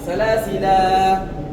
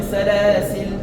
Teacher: lorsque tu veux t'arrêter sur le lam, il y a deux possibilités. Soit salasila, tu tires deux temps, ou bien salasil.